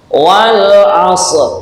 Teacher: sifatnya Shad adalah istilla yang berbeda dengan Sin ah maka tengahnya lidah nah ini diangkat ke atas · kita contohi Bismillahirrahmanirrahim Bismillahirrahmanirrahim [Tepuk tangan] as nah Shad cara mengucapkan ujung gigi atas ditempelkan ujung gigi yang bawah Jadi rapat giginya kemudian ujung lidah dipancatkan atau ditempelkan kedua gigi tersebut